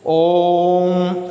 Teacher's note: ओम ऐसे करेंगे ना। ओ जो है, ओ के ऊपर ज़्यादा जोर पड़ रहा है, ज़्यादा समय लग रहा है ओ के उच्चारण में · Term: प्लुत स्वर